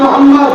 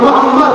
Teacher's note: খেয়াল করতে কোন নবীর নাম নিলে দুই ঠোঁটে ঠোঁট ঠেকছে